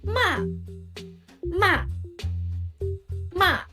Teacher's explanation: sharp and falling, like you are angry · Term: fourth tone